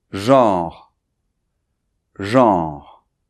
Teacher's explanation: notre R français en position finale, donc très léger, mais il se fait au niveau de la gorge ici comme des gargarismes.